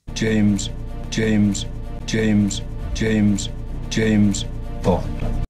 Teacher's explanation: the new film where double-oh-seven doesn't D accent his repeated surname James no longer gets the main accent and no longer sounds like the end of a phrase